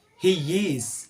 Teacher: It's like there's Y in the middle of both of them. The word of he and is.